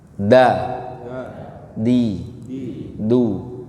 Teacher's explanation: Huruf dal itu makhrajnya ujung lidah menempel ke gusi atas.